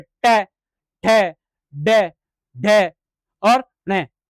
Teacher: कठोर तालु का जो अग्रभाग है मूर्धन्य, उसमें बोला जाता है। जैसे ट, ठ, ड, ढ और न, इनका जो उच्चारण स्थान है वो मूर्धा है।